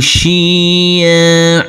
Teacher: Huruf ain kita baca panjang dengan panjang dua harakat dan tanwinnya kita rubah menjadi fathah.